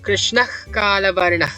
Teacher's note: Visarga becomes a velar fricative, or the kha, when it's being followed by a velar consonant. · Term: Jihva Mulya